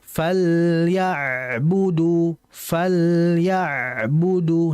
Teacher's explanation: ditahan lam dan ainnya karena keduanya memiliki sifat bainiah atau tawassut.